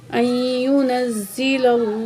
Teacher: लफ्ज़ अल्लाह से पहले ज़बर है, अल्लाह को मोटा करके पढ़ा जाएगा।